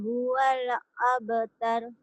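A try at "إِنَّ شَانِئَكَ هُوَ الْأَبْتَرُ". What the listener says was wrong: Jangan huwale itu miliknya Atin itu. Huwale. Jangan ada e-nya ya. Inna syani'aka huwal abtar. Huwal abtar.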